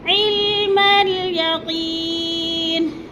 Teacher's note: یقی کو تھوڑا سا ہم نے لمبا کر جانا ہے کیونکہ ادھر یا مدہ ہے، یا ساکن سے پہلے قوف کے نیچے زیر ہے، تو یا مدہ کو 1 سے 2 الف کے برابر ہم نے لمبا کرنا ہے۔